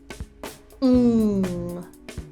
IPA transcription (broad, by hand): ŋ